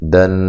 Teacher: نون مشدد پہ غنہ ضروری ہے، یہ نون ہے اور مشدد ہے، ٹھیک ہے، شد ہے اس کے اوپر، اس پہ غنہ کرنا چاہیے۔